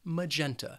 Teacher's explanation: This word has 3 syllables and the stress is on that second syllable, magenta. The first syllable has that schwa, that magenta.